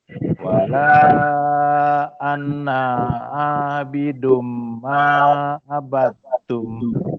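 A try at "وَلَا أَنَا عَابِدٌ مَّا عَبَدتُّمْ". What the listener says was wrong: Na tak panjang. Wala ana yang panjang. Ana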